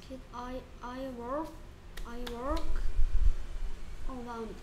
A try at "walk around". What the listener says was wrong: 자, walk를 발음하는데 L을 소리 내려고 하는데 L이 소리가 안 나는 글자야. Walk. Walk around.